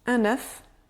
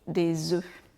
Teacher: Vous vous rappelez, on dit un œuf, mais on dit des œufs. Donc le F et le S à la fin de œuf, au pluriel, on ne le prononce pas.